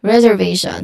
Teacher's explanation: Now the stress here, it falls on the third syllable, which is on ve, reservation.